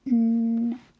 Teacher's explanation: our tongue is just behind our teeth